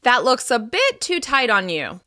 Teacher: Stressing bit makes the other person feel like they can take action to find a simple solution